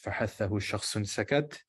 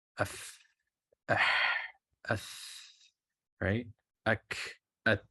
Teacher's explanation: So the nature of these letters is there's aspiration. There's a voiceless breath.